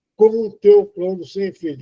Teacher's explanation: Eu estou nasalizando o M com o O da frente. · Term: nasalização